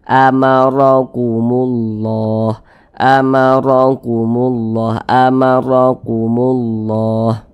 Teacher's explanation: Sehingga pangkal lisan kita tuh naik terangkat ke atas, ra-nya kita tebalkan. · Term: dibaca tebal